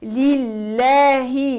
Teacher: اللام لله اللام مرققه في لفظ الجلاله لانها سبقت بحركه الكسر لله كسره الها لابد تعطي كسره خالصه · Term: اللام مرققة